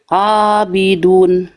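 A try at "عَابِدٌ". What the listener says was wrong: Nah, itu masih hamzah. Bukan tapi abidun.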